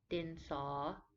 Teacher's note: the saw is a rising tone as if you are asking a question din saw like that you write in rising tones both our